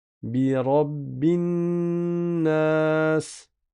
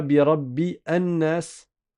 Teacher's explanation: On ne dit pas bi rabbi an-nas. Le alif ne se prononce pas, c'est un alif de liaison. On le prononce que en début de lecture.